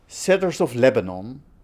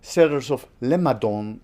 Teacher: Somebody's trying to say cedars of Lebanon, but says cedars of Lemadon instead. We have a non-nasal B and then a nasal N, but it changes into a nasal M and then a non-nasal D. So it's as if the feature nasal moves from the N to the B.